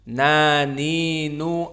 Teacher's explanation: Nun kita sebutkan di saat disukunkan tidak boleh keluar nafas. Naninuan. Tidak ada an. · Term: jahr